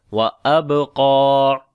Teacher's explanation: با کے اوپر قلقلہ کریں گے، کمزور قلقلہ ہوگا، قاف کو موٹا پڑھیں گے اور لمبا بھی کریں گے کیونکہ اس کے اوپر کھڑی زبر ہے، تو پڑھیں گے وَأَبْقَى